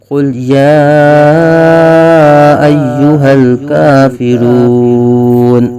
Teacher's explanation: لام ساکن ہے، یا کھڑا زبر قائم مقام الف مدہ ہے۔ حروف مدہ کے بعد حمزہ دوسرے کلمے میں آ رہی ہے، یہاں مد منفصل ہوگی جو کہ 2.5 الف تک کھینچ کر پڑھیں گے۔ کافرون میں واو ساکن سے پہلے پیش واو مدہ ہو رہا ہے اور نون پر زبر ہے جو کہ وقت کی وجہ سے ساکن ہو جائے گی، تو نون ساکن ہوگا، تو حروف مدہ کے بعد یہاں عارضی سکون آ رہا ہے، مد عارض ہوگی، 1 2 یا 3 الف تک کھینچ کر پڑھیں گے۔